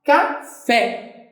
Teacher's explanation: a última sílaba é a sílaba mais forte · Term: oxítona